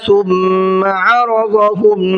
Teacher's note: ثم کہ میم پر تشدید ہے تو غنہ کر کے پڑھیں گے۔ عرضهم ضاد کو منہ بھر کے پڑھنا ہے، را کو بھی منہ بھر کے پڑھنا ہے۔